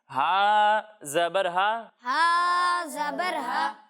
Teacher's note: جب ہم ہا کی ادائیگی کریں گے تو اسے حلق کے درمیانے حصے سے پڑھیں گے